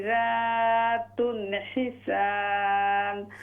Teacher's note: फबिअय्यि आलाइ रब्बिकुमा तुकज़्ज़िबान फीहिन्ना खैरातुन हिसान। खैरा, रा को फुल माउथ से पढ़िए